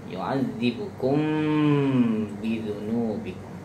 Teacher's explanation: Itu mim mati bertemu ba, ada ikhfa syafawi.